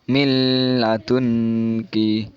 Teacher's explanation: jadi nunnya tidak dibaca, langsung masuk ke huruf lam. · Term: idgham bila gunnah